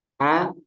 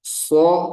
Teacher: Kalau A lebih dibuka, kalau so lebih menyempit. Persamaannya sama-sama dibuka.